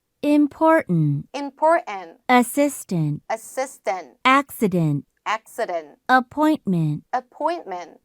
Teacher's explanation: 처음에 이제 important 같은 경우 보시면 T 소리를 안 냈죠? 여기도 NT에서 T 소리 안 냈고, 여기도 NT에서 안 내고, NT에서 안 냈고, 여기는 이번에는 N 다음에 D 들어갔는데 요거 소리 안 냅니다.